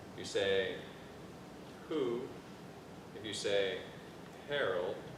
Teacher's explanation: a slight breathy sound you say who if you say Harold there's just a little breath that comes out of your mouth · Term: the H technique